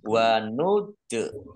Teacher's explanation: dal sukun, bacaan kol-kolah, dibaca memantul, ditampakkan pantulannya.